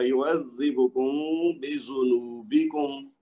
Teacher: میم کو تھوڑا سا لمبا کریں گے، آواز کو اخفاء کریں گے